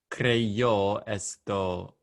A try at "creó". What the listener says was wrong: Yeah, what you said was believe, but creó, no Y in the middle.